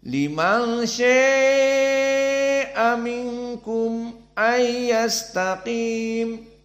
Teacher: Maka mad al-lazim syaa dibaca seperti jumhur 4, dan dibaca sya dalam keadaan al-imalah al-kubra.